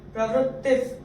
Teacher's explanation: और यहाँ प्रवृत्तिफ, तो यहाँ भी प, विसर्ग के बाद प आ रहा है, तो विसर्ग का उच्चारण होगा आधा फ